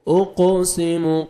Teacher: فلا اقسم، قاف حروف قلقلہ میں سے ہے جو 5 لیٹرز ہیں، قاف طا با جیم دال، جب بھی یہ ساکن آتے ہیں تو ڈبل ساؤنڈ آئے گا، اوقو، اقسم، قاف کو موٹا کر کے ڈبل ساؤنڈ آئے گا